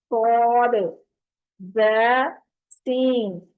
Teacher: اس کو سواد نہیں بولنا، اس میں واو کی آواز نہیں آنی چاہیے. عام طور پر ہم جب پڑھتے ہیں تو سواد بول دیتے ہیں، سواد نہیں ہے یہ.